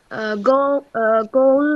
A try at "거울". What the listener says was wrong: এটা কিন্তু গৌল না, কিয়ক প্রথমে থাকলে কি উচ্চারণ হবে? তাহলে খৌল। ও কিন্তু খৌল বলছে। খৌল। খৌল